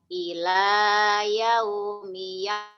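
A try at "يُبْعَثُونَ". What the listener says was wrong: ila yaumi yub, bukan yab.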